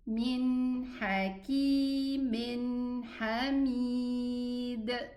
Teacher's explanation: The Dal Sukun has a qalqala.